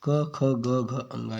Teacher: जिन व्यंजन ध्वनियों के उच्चारण में जीभ के पिछले भाग से कोमल तालु का स्पर्श होता है कंठ ध्वनियाँ व्यंजन कहलाती हैं। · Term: कंठ व्यंजन